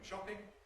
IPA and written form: ˈʃɒpɪŋ (shopping)